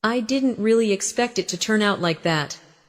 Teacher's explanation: The stress falls on didn't really expect turn out.